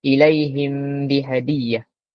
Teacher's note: Kita sorok huruf mim ni ke dalam huruf ba. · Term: ikhfa syafawi